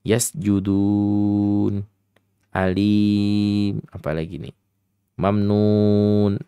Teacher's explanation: Mad Arid lisukun adik-adik semuanya bisa bebas memanjangkan bisa dua harakat bisa empat harakat bisa En harakat akan tetapi kita selaku pembaca al-qur'an harus adil